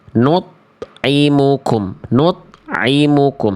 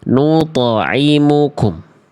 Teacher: harus dipantulkan karena kita semua sudah tahu huruf to itu punya sifat yang muncul ketika sukun namanya kolkolah